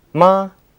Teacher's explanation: The first tone is high and leveled from degree 5 to 5.